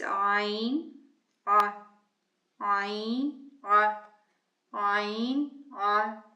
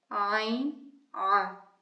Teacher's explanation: So it's ayn, ah, ayn, ah, ayn, ah. It's almost as if there is a constriction at the back of the throat.